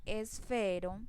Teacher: la mayor intensidad en la fuerza de voz la hago en la sílaba fe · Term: acento